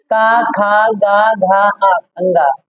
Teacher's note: ये हमारे कंठ से बोले जाते हैं